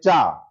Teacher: हवा भी लगेगी और घर्षण भी हो रहा है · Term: स्पर्श संघर्षी व्यंजन